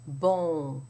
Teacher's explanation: In the first syllable, you have the B with a nasal O. Bon. But you do not pronounce the N as you would in an English word.